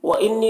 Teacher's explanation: نون مشدد ہے، نون میں غنہ کر کے پڑھیں گے